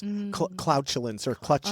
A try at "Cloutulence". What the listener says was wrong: Not CLU, not like clutch. Clout